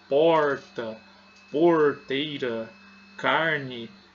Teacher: Esse R dobrado, onde nós levamos a ponta da língua ao céu da boca